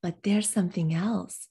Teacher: we don't normally stress pronouns but i'm giving a little rhythmic beat to the word there because english loves alternating stress